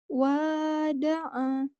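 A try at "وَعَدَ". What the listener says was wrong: Kebalik. Hai, coba balikin.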